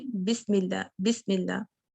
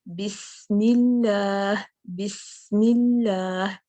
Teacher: बिस, ये जो हम्स है ना, बिस कितना जारी रखना है, जब तक कि आप मीम पर नहीं आ जाती। मीम पर जाने से पहले सीन को नहीं छोड़ना।